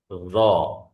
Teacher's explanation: Jadi pangkal lidah naik karena tebal ya ujung lidah kita nempel di ujung gigi seri atas. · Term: versi tebalnya